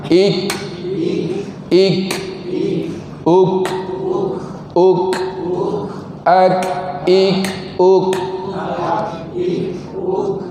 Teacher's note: Bila dia berbaris mati, dia agak keras sikit, dia punya hamas dia tu agak jelas sedikit.